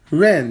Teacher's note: That is a second tone character. Ren, that's a rising tone.